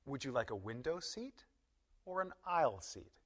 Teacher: We use rising intonation on the first alternative, the choice before the word or.